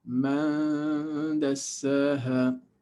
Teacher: And man dassaha, man, you are actually anticipating the pronunciation of the letter dal. So when you are pronouncing the nun, you are hiding it because your mouth is already making the shape of dal. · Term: Ikhfa